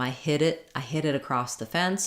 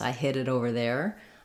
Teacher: the difference between hit and hid is in how long I hold the vowel